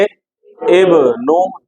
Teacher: दोनों होंठ मिलकर फौरन अलग हो